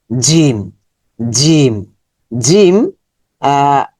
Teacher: জিম জিম জিম এটা শক্ত sound হবে জিম এটার মাখরাজ আমরা দেখি জিমের মাখরাজ জিম জিহবার মধ্যখান উপরের তালুর সাথে জিহবার মধ্যখান উপরের তালুতে স্পর্শ উপর দিকে চলে যাবে শক্ত সাউন্ড হবে